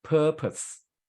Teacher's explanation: purpose we stress at the first syllable